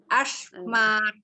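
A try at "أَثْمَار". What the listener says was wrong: Oh, bacanya kenapa jadi shin ya? Asmar. Ini sin. Lidahnya harus keluar lagi.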